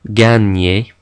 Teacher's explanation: GN in French is similar to the Spanish N with the tilde. It makes a ny sound. Okay, we don't pronounce the G and the N separately.